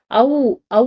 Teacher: அவ் வந்து அழுத்தி சொல்லும்போது பாருங்க முடிகிற இடத்துல உ அப்படின்ற சவுண்ட் வந்து வருது அதனால அவ் அப்படின்ற எழுத்துக்கு வந்து உ அப்படின்றது இனம் ஓகேவா இந்த மாதிரி